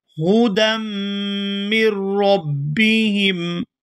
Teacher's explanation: یہاں دال کو میم مشدد کے ساتھ ملائیں گے تو غنہ کریں گے